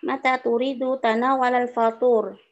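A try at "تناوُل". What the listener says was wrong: Tanawula, laisa tanawala. Tolong, tolong perbaiki. Ini masdar tanawu, dhammah ya. Bukan fathah. Tanawu. Masdarnya. Tafa'ala, yatafa'alu, tatafa'alu, tafa'ulan. Tafa'u. Tafa'tanawu. Dhammah ya.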